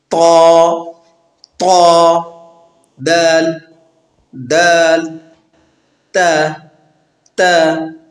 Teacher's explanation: زبان کی نوک اور اوپر کے دانتوں کی جڑ سے ادا ہوتے ہیں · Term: حروف نطعیہ